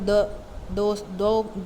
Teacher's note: द जब आप produce करते हैं तो आपकी जो टंग टिप है दोनों दांतों के दरमियान आती है। तो इसी तरह इसीलिए इनको कहते हैं इंटरडेंटल साउंड्स।